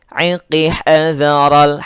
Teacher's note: Minas sawa wa mad tabi'i iqi hadaral masuk langsung ke lam, lamnya alif lam qamariyah, maka harus dibaca jelas.